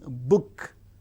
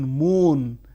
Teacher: the active articulators are the two lips